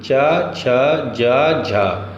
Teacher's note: व्यंजन, ध्वनियां स्पर्श संघर्षी